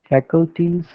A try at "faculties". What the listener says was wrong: Yeah.